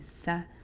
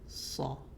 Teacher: Sad with the fatha being a heavy letter, we frown and say aw, like awesome, and we would say saw, not sa like seen would be, but saw.